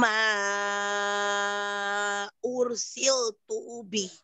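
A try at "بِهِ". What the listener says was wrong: Tuhnya keseret sedikit ya.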